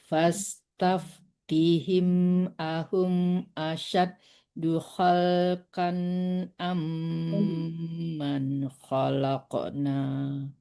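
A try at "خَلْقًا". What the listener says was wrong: Ya, khalqan ditebalkan qafnya, jangan khalqan, tapi khalqan. Bukan kam, khalqan itu izhar ya, harus jelas tanwinnya. Jangan ditahan ya, dong. Khalqan harus jelas. Khalqan am, jangan khalqan. Nah, nggak ada dibawa ke hidung itu ya. Itu izhar harus jelas bacaannya.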